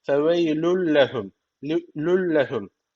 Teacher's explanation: Peki nasıl okuyacağız gunnesiz bir şekilde katacağız